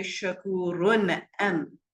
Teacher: I would do straight izhar because I have a throat letter that comes.